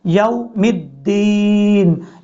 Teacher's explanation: یا کے بعد جو واو ہے، اس واو کو آپ نے لمبا نہیں کرنا، شارٹ کٹ پڑھنا ہے